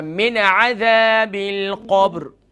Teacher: نون ساکن کے بعد عین آ گیا حروف حلقیہ میں سے، تو یہاں پر اظہار ہوگا